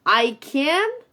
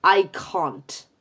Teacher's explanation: la positiva es can, con la A frontal, y la negativa es can't, con la A trasera